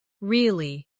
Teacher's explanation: With a falling tone to show you don't believe someone